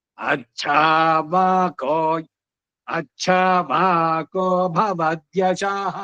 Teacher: ಛ ಮಹಾಪ್ರಾಣ ಬಂತು ಅಂತ ಉದಾತ್ತ ಬೇಡ